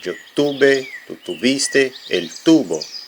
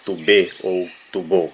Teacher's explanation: A primeira e terceira pessoa do singular são formas graves ou llanas. Ou seja, a sílaba tônica é a penúltima, né? Em português é uma paroxítona.